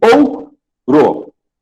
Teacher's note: o O e o U ficam numa sílaba só. Como eu não posso ter 2 vogais na mesma sílaba, se eu tenho o O e o U, nesse caso aqui o U vai ser semivogal e o O a vogal.